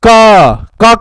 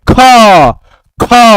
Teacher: वायु निकले उसको बोलते हैं अल्प प्राण और महा माने महा ज्यादा प्राण ज्यादा वायु निकले तो कहते हैं महाप्राण